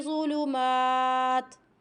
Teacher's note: تاؤں نہیں پڑھنا، تیوں نہیں پڑھنا، توں کی آواز آئے گی کیونکہ دو پیش ہیں۔